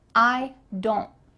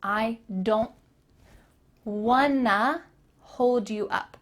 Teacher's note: The T here is cut out. Your tongue is going to be at the top of your mouth, but you're not going to let the air through.